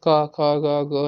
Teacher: इनका उच्चारण निकलता कहां से हमारे गले में